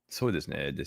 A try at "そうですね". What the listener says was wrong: No, you have to be gentle with these because these are for the, these are the tasleek words that if you want to make someone think that you're listening, but you're not listening, most Japanese people do it.